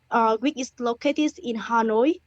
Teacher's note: there's a lot of rising tones currently a lot of rising intonations at the end of Clauses which isn't overly natural